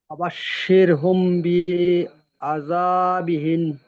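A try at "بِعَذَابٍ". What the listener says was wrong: বি বলে একটু টান হয়ে গেল, বা নিচে জের আছে, টান হবে না। ফাবাশশির হুম বি আযাবিন।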